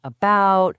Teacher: That lazy soft uh sound you hear in unstressed syllables like in about or the beginning of banana. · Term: the schwa